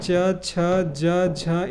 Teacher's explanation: च वर्ग के सभी वर्णों का उच्चारण तालू से होता है